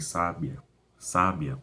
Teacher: Quando a penúltima sílaba é mais forte, como em sábia, sábia, uma pessoa que age com inteligência, né, com sabedoria, ela é uma paroxítona, porque o sábia é o Sá que é o mais forte, não é o Bia.